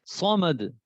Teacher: صاد، اس کو بھی موٹا پڑھنا ہوتا ہے